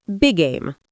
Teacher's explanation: just say one long G.